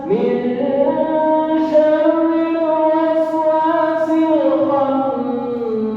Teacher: Jadi ketika kita baca, mengapa bacaannya kok nunnya ditahan? Iya, karena ini hukumnya dengung